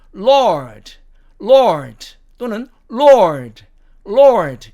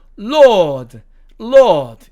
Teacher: 자, 그 다음에 이 여섯 번째 단어도 미국식으로 발음을 하면 Lord, Lord 또는 Lord, Lord 이렇게 발음이 되지만 영국식으로 발음하면 Lord, Lord 이렇게 R자가 사라짐을 알 수가 있습니다